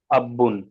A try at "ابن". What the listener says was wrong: ابن تشدید کہاں ہے؟ بغیر تشدید کے۔